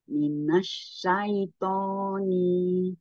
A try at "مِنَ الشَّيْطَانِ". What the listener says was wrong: Sedikit lagi dikurang. Jangan koni. Jangan. Kalau kita ayun, bu. Koni. Satu ayunan saja. Satu ayunan. Tapi kalau berarti dua ayunan.